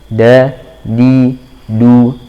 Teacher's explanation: Ditipiskan juga dalnya, bukan tu tapi du.